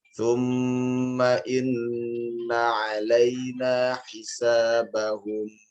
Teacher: mim pada saat dia disukunkan jangan terlalu cepat untuk ditarik atau diberhentikan. Ada dengung asalnya tetap harus bertahan